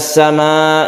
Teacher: mad wajib muttasil juga dalam satu kata panjangnya dua setengah Alif kita baca panjang